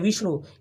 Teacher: इसमें पहले वाला शब्द वी है ना, विष्णु, वी पर जोर पड़ रहा है ना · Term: बलाघात